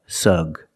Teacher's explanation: The first syllable is the short uh sound like cup and up.